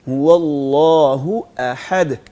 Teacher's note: حمزہ اور ہاں ایک ہی جگہ سے ادا ہوتے ہیں, تو اس لیے اس کو مکس نہیں ہونے دینا, ہم نے دونوں کو واضح کرنا ہے.